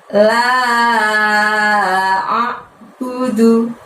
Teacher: Jadi la-nya panjangnya 5 disusul dengan lafadz a'budu.